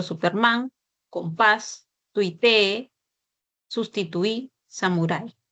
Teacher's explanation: Ya sabemos que el acento recae en la última sílaba. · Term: palabras agudas